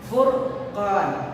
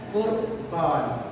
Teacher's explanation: pada lafaz anzalal furqan itu huruf ra-nya itu dibaca tebal, furqan, bukan furqan, karena huruf ra itu sukun dan kemudian diambil oleh huruf berharokat dhamma.